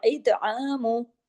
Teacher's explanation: इतआमु, तो को हैवी और तो पे कलकला भी होगा